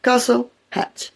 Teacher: The middle T in castle and hatch are silent. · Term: silent letters